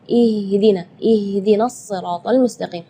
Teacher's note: Sedangkan makhraj huruf H itu adalah dari tenggorokan. Jadi keluarnya tipis karena H itu termasuk huruf di antara 28 huruf hijaiyah yang paling lemah adalah huruf H.